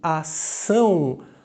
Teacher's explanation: Eu tenho a vogal A, que tem som nasal, an, e o O tem som de U.